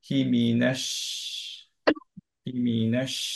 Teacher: শিনটা হচ্ছে হামস। So যখন সুকুনে থামবো তখন আমরা পড়বো হচ্ছে হিমিনাশ, হিমিনাশ, একটু বাতাসটা বেরোবে।